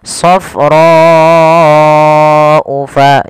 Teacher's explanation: Panjangkan huruf ro sepanjang 4 harokat karena di sini ada bacaan yang kita namakan dengan mad wajib muttasil.